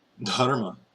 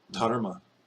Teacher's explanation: Aspirate the DH. And then again, the ah gets kind of retroflexized.